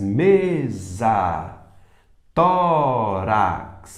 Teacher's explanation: tórax mais forte é o Tó